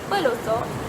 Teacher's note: pelosok daripada huruf K tersebut akan disekat oleh rapatan pita suara tanpa menggetarkan pita suara, maka terhasillah plosif glotis.